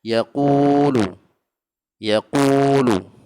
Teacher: waw berbaris dhammah. Dibaca juga 2 harakat. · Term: huruf mad